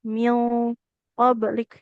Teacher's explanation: Mil tebal kan Ibu? Karena dia nun sukunnya kan ketemu huruf qaf ya. Huruf qaf itu termasuk huruf yang tebal. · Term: ikhfanya ikut tebal